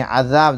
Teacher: अज़ाब, दाल अलिफ ज़बर ज़ा, अलिफ से पहले ज़बर अलिफ मद्दा थोड़ा खींच कर पढ़ें